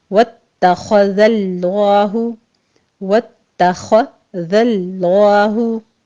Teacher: واتخذ اللہ خا پر ہے، تا کو آپ نے باریک رکھنا ہے، صرف تشدید ادا کرنی ہے، واتو نہیں کہنا آپ نے، واتخ تخ خا پر کرنا ہے۔